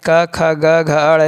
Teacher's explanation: क, ख, ग, घ, ण सभी का उच्चारण स्थान कंठ से होता है